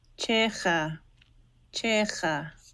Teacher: It was just a regular aspirated CH.